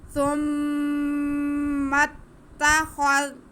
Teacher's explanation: آگے خا پہ زبر ہے، زال ساکن ہے، خا کا زبر زال کے ساتھ ملائیں گے. ثم اتخذ خا کو منہ گول کر کے تھوڑا پڑھیں گے تو صحیح سے ادا ہوگا